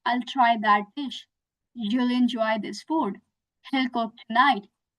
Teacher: When you contract will, you just omit this W and add the L sound with your subject. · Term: contraction of will